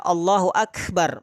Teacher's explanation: Huruf kaf itu tentu keluarnya dari aqsal lisan, pangkal lidah dengan langit-langit atas.